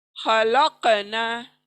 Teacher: काफ को double sound produce करते हुए पढ़ना है। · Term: कलकला